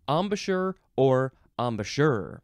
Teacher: you can emphasize the last syllable